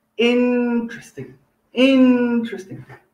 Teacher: We say in, stress on the first part, interesting, interesting.